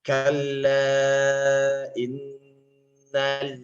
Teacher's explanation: lam juga ada tapi bukan dengung, melainkan dia tetap pada makhraj. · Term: sifat tawassul